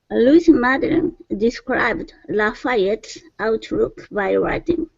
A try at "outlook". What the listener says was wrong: Okay, so open the mouth just a little bit more on look. Instead of look, outlook.